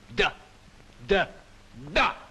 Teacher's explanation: la consonne D, par exemple, se prononce en donnant du bout de la langue au-dessus des dents d'en haut.